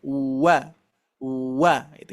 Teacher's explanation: posisi makhrojnya di asyafatain ya di antara dua bibir ya atau misalkan secara simpelnya adalah memonyongkan dua bibir · Ini termasuk huruf yang harus monyong, itu adalah huruf waw Bapak Ibu sekalian. Karena huruf waw ini sebelum kita mengucapkan harokat itu sudah monyong duluan ya. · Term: huruf wau